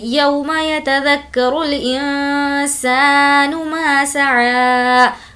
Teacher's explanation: یو یہاں پر واولین ہے تو کھینچیں گے نہیں